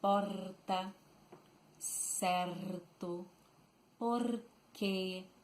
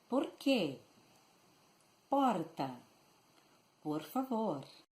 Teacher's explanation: The R in most part of Rio Grande do Sul is pronounced using the tip of the tongue, vibrating.